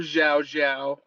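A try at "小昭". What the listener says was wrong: The X is The X is like an S. The X Xiao is pronounced differently than the Z Zhao.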